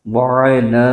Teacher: عین کو حلق کے درمیانی حصے سے ادا کرنا ہے۔